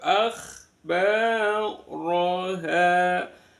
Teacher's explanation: ro berarakat fatkah dibaca tafkhim tebal.